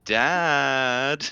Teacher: she does that australian diphthong thing when she wants something going dad